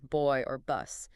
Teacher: So, bilabial means two lips. So, both sounds require bringing the top and bottom lips completely together to stop the airflow · B is a voiced bilabial plosive. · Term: bilabial plosives